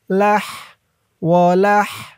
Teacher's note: ওয়াদ্দামু, হুররিমাত আলাইকুমুল মাইতাতু ওয়াদ্দামু ওয়ালাহ, ওয়ালাহ, লাম দিয়ে হা ধরবে, হার আওয়াজটা গলার ভিতর থেকে চিকুন হয়ে বের হবে